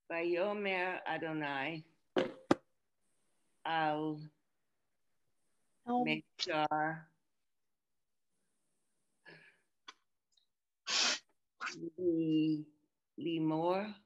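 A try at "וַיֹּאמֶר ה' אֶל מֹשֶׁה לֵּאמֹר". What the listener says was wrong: So the 3 dots here is L, not al. And this is, do you see the mem and the vowel is here? O, Moshe, Moses. So 2 dots is A, 1 dot, where's the 1 dot? Is E, here like seat.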